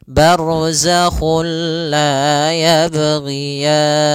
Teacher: juga sendiri itu idgham yang kita namakan juga idgham Kamil yaitu kita memasukkannya secara utuh secara seluruhan kepada huruf lam sehingga tidak menyisahkan sedikit daripada bunyi huruf nunnya